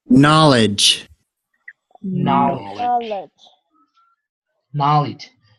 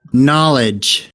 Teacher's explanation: La vocal que sigue es una I corta. Y fíjense cómo suena muy parecido a la E. Knowledge. Pero no es una E.